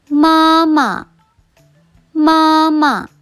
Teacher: මුලින්ම කියන මා වචනය කියන්නේ ෆස්ට් ටෝන් එකෙන් දෙවෙනියට එන මා වචනය කියන්නේ නියුට්‍රල් ටෝන් එකෙන්